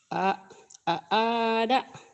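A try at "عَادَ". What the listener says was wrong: Ainnya belum keluar tuh. Aada, aada. Aada.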